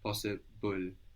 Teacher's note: When we say possible, we pronounce a vowel between the B and the L. Possible. No, there's a vowel there, but we don't write it.